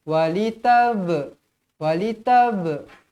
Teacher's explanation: huruf ba termasuk dalam Qalqalah mestilah dibaca melantun